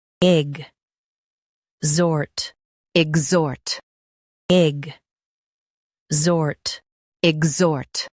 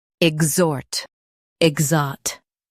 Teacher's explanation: Stress zort and keep ig soft.